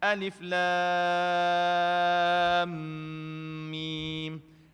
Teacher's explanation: Mim jumpa mim, idgham, mislain. So kena dengung.